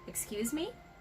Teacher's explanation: you can also say excuse me by raising the tone at the end of the word.